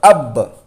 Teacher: حمزہ با زبر اب با زبر ب اب، حمزہ کے اوپر زبر ہے، زبر کو جلدی پڑھے، تھوڑا بھی نہ کھینچے، معروف پڑھے، مجھول آواز سے بچے، زبر کی آواز اوپر کو جاتی ہے۔